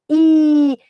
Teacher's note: I, é algo que sobe, I, e produz lá no céu da boca. É lá no céu da boca que produz.